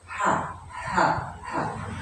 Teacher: huruf H yang sama-sama huruf tenggorokan yang pasangannya huruf Ain tadi itu ketika keluar itu mengeluarkan nafas mengalir nafasnya dan dia memiliki sifat Hames